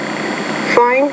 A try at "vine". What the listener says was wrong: Okay, so I think the initial V, you need to pronounce that with more air. So you have fine, vine, fan, van.